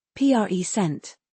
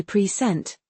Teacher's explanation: If you stress the first syllable, present, it means a gift or the current time. And if you stress the second syllable? If you say present, it's a verb, meaning to give or introduce something.